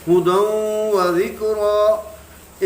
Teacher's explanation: تو یہاں پہ ہم ادغام مع غنہ کریں گے، غنے سے اس کو پڑھیں گے